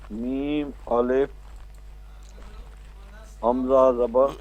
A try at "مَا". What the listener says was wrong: بھائی جان مد بھی بول میم الف مد زبر ما